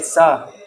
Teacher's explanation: Bangladeshi people and they'll say sa, they won't say sha at all, and they'll say sa for everything